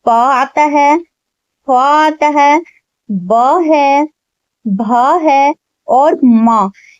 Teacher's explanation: इन 5 व्यंजनों का उच्चारण हम दोनों ओठों के बगैर कर ही नहीं सकते, तो ये जो है ओष्ठ व्यंजन कहलाते हैं।